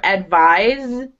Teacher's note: The the verb advise, it sounds like a zed. It's a z sound, not a s sound.